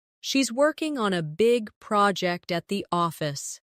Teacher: Stress: working, big, project, and office.